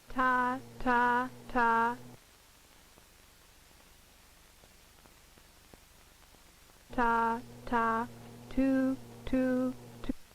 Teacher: Co-articulation can take place to some degree even when the tongue is involved in producing the consonant. For the sound T, the tongue tip must contact the alveolar ridge. However, the posterior portion of the tongue is relatively free to approximate its position for the following vowel.